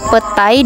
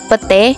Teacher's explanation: Perubahan ini terjadi pada bunyi vokal rangkap ai ke vokal tunggal e.